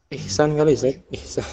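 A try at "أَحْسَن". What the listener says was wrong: Enggak, ihsan beda. Dia harus serupa seperti ini bentuknya, af'alu. Harus sama seperti af'alu. Ihsan dia beda. Ihsan, tulisannya panjang. Sinnya panjang. Jadi ahsanu, ahsan. Ini nama orang yang dia itu seperti fi'il, berwazan atau bentuknya seperti wazan fi'il, bentuk fi'il.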